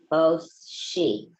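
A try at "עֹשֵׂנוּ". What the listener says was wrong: Not she, because there's a dot over here to make that a sin. OC.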